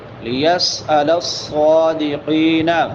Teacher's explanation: صاد سیٹی والے حروف میں سے بھی ہے اور موٹے حروف میں سے بھی ہے. موٹا بھی کریں گے اور سیٹی بھی نکالیں گے.